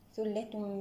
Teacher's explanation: علاقة نون التنوين مع حرف الميم تباعد في المخرج تقارب في الصفات وهنا الحكم لدينا حكم إدغام كامل بغنة أكمل ما تكون